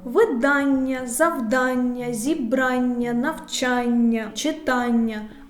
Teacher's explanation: група слів з наголошеним суфіксом ан